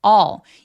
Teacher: 이거 발음할 때 all 아니고요. 입술 내밀지 말고 턱 길게 벌려서 all 이라고 발음합니다. L 발음 너무 열심히 발음하지 않습니다.